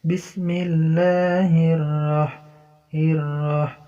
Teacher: بسم الله alif lam syamsiah, idgham syamsi, hukumnya idgham. Alif lamnya enggak terbaca, langsung ke lam.